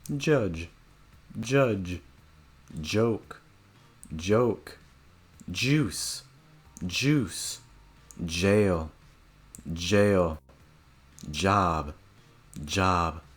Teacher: Also, make sure that your throat vibrates. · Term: j sound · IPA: dʒ